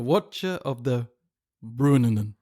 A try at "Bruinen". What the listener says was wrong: No, you got one too many syllables. One too many nuns in there. Bruinen. How is a UI pronounced in Tolkienish? It could be Brynen. I think it's Bruinen.